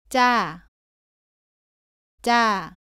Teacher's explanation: 쌍지읒은 지읒을 두 번 겹쳐 씁니다. 발음은 자와 비슷한데 목에 힘을 주면서 조금 더 세게 발음합니다. 공기가 나오지 않도록 발음합니다.